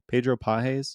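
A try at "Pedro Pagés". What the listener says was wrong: it looks like if you've never heard his name before, it is on paper in English looks like pages, but it yeah, Pedro Pages, but it is pronounced, I believe it's Pahis.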